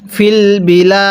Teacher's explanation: পড়ব এখানে দালের উপর সাকিন দিলে কিভাবে পড়তে হবে ফিলবিলা এখন দালটা ধাক্কা দিয়ে পড়ব কারণ দালটি হলো কলকলার হরফ